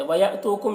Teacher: یہاں پر حمزہ ساکنہ ہے، جھٹکا لگا کر پڑھیں گے. تو یہاں پر واو مدہ ہے.